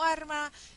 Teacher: arma y alma se pronuncian las dos como arma